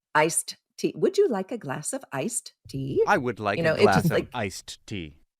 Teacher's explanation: we don't pronounce the D in any of these cases, because if we did, our speech would sound really halted. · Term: elision